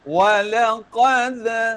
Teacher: qalqalah sughra. Lantunannya ringan ke hadapan.